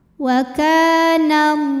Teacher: Lam pada lafaz Allah atau lam jalalah dibunyikan secara tafkhim sebab huruf sebelumnya yang nun barisnya di atas yaitu baris fathah. Maka cara bacanya ditebalkan, pangkal lidah dinaikkan.